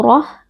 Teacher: mengangkat pangkal lidah karena di sini ro berharakat fathah lalu roh karena kita wakaf pada tamarbutah tamarbutah kita ganti menjadi ha sukun